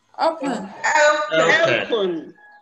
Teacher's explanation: There is a diphthong at the initial position of open, and you must realize it.